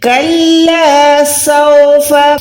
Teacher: سین کو وسل ساؤنڈ دینی ہے، سیٹی کی آواز آئے گی